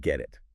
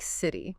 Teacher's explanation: >> When a T sound comes between two vowel sounds, it often softens. It sounds less like a sharp t and more like a soft d or even sometimes a quick r sound. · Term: flap T